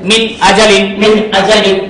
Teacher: ওয়াইন খ এই ছয়টি হরফের যে কোনো একটি হরফ আসে তখন নুন সাকিন তানবিনকে গুন্না ব্যতীত পরিষ্কার করিয়া পড়িতে হয় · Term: ইজহার